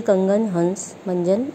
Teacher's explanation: इसका उच्चारण नाक से होता है, इसे अनुस्वार कहते हैं। जैसे कंगन, हंस, मंजन आदि।